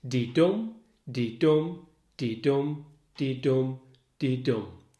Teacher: 10 syllables of a stressed and unstressed pairing. So the di-dum on its own, that stressed and unstressed pair of syllables, is an iamb. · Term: Iambic pentameter